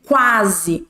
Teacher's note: o u é uma semivogal porque a gente não escuta muito o que mais nós vamos ouvir é o a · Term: ditongo crescente